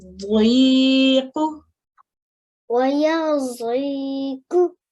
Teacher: It's a dad, and it's quite a thick sounding letter. Sounds a bit like a dal, but it's more pronounced from the back of and the middle of your mouth